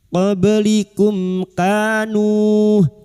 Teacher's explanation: huruf ba yang mati asli di tengah kalimat qalqalah sugro. Jangan lupa dipantulkan.